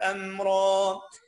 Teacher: الراء مفخمة عشان خاطر مفتوحة